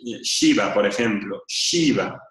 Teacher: como un acento arriba de la s Eso quiere decir que es una palatal y por lo tanto vibra un poco deja pasar un poco el aire por encima de la lengua